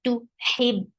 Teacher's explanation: This sound is very sharp. To hib, give a very nice misty sound for ha, and give a kasra sound on ha and attach with ba.